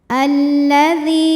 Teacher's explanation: ini sebetulnya terdiri dari dua lam lam sukun dan lam fathah lam yang sukun tidak dibaca sehingga kita masuk ke lam kedua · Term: Idgham Syamsi